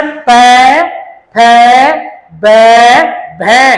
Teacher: इनका उच्चारण करते समय एक ओठ दूसरे ओठ का क्या करता है? स्पर्श। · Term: प वर्ग